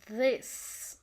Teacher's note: dental, tongue against teeth